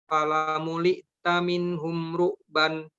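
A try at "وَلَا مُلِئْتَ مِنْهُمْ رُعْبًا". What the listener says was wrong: Ya, jadi tidak bukan fa ya Pak, tapi waw. Wala muli taminhum ru'ban. Wala muli taminhum ru'ba.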